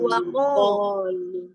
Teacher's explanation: Kita bayangkan ketika itu diucapkan, si huruf qaf ini mengarahnya ke huruf O.